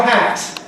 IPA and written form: hæt (hat)